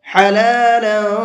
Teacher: حلالا طیبا، لام کے اوپر تنوین ہے، 2 زبر ہیں، اور تنوین کے بعد میں طا آ رہا ہے، اور یہ طا بھی اخفا کے حرفوں میں سے ہے، تو یہاں تنوین کے اندر اخفا کریں گے، ہلکا سا آواز کو ناک میں چھپا کر کے پڑھیں گے۔